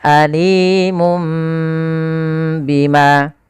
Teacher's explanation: mengganti suara nun diganti suara mim. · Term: iqlab